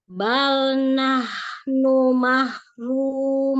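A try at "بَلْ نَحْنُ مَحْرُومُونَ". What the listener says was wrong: Nun bainiyah di akhir jangan terlalu panjang, ya. Mahrumun cukup. Yang penting ada. Ya, jangan mun kelamaan bainiyahnya, ya. Jangan kelamaan, karena nun sukun itu setingkat gunahnya itu setingkat naqisah, ya. Kurang sempurna. Jadi jangan terlalu lama bainiyahnya ya.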